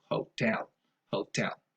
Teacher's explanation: Stress goes on the second syllable and probably never on the first syllable.